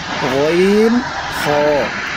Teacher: তিন নম্বর কণ্ঠনালীর শেষ হইতে, মানে গলার শেষ ভাগ থেকে উচ্চারিত হয় গইন হ। গইন, এই যে মোটা করে, মোটা করে বলতে হবে গইন হ।